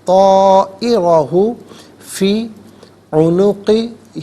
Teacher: طائرہ میں را پر زبر ہے، را کو پر کر کے پڑھیں گے۔ طائرہ فی عنقہ، فی عنقہ، یہاں رکیں گے تو فی عنقہ پڑھیں گے۔